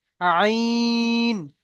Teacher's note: আইন আর গইনের তিন আলিফ পরিমাণ টান